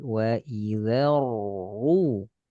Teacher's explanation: Tebal ro sukun karena masuk ke ro dhammah.